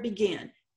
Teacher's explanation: There is a vowel right in front of it. The accent is on that final syllable.